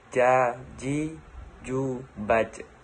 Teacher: Melafalkan huruf ja dilafalkan dengan menyentuhkan lidah tengah ke daerah langit-langit.